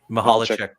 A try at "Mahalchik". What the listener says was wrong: You added an extra syllable, but pretty close.